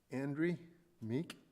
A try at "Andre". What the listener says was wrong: Getting there, getting close. Andre, not Andrew. It's getting closer, Andre.